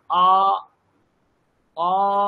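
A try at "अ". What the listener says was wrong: আপনি অ, অ, আপনি অ বলছেন না, দেখুন একটা ওকার ওকার শোনাচ্ছে।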